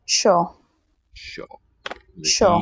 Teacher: E makes the S sound slender, which means a sh in this case.